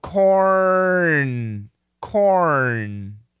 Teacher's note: the tongue goes in and Touches for the N